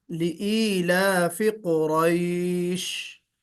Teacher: तो लिईलाफि कुरैश, रा को मोटा पढ़ना, लिईलाफि कुरैश।